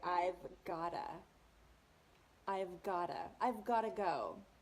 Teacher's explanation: So the got to are linked together like one word, gotta.